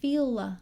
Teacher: feel long e and then linking with that schwa